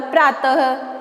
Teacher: विसर्ग का उच्चारण अह के रूप में होता है